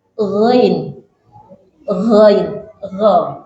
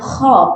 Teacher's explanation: Makhrajnya sama. Kha sama ghain yaitu di tenggorokan yang paling atas.